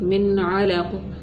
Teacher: یہاں پر نون ساکن ہے, نون ساکن کے بعد حروف حلقی میں سے عین آ رہی ہے, تو ہم نے کیا کرنا ہے, صرف نون ساکن کی آواز کا اظہار کرنا ہے. قاعدے کا نام ہے اظہار حلقی.